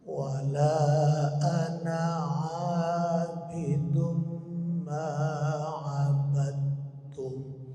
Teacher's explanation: dalnya sudah masuk ke ta jadi enggak ada lagi bunyi Dal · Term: idgham